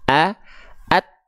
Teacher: Tertahan dulu suaranya, baru keluar percikan nafasnya.